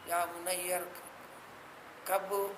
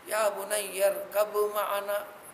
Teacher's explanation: یعنی با کو میم میں بدل دیں گے ، لکھنے میں با کو باقی لکھیں گے، اس لیے میم